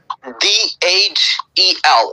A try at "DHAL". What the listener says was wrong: Yeah, EL, no, AL. Yeah, H is extra using in zal.